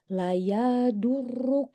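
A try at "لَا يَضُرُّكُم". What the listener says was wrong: La panjang. La yadurrukum.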